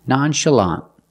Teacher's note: The second syllable is the sound uh. It's not stressed. You can call it a schwa, but it's the same sound as in cup and up.